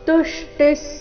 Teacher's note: ಸಮತಾ ತುಷ್ಟಿ ತು ಮೇಲೆ ಆಘಾತ